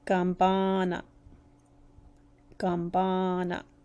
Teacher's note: you can hear that long A sound in the ba part.